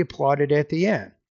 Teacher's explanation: So at the end of the sentence, you need to fall with the tone a little bit.